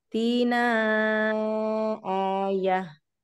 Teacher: ada tanda panjang di nun, panjangkan dulu